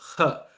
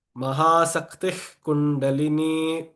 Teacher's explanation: That ha must come from the pit of the throat. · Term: guttural ha sound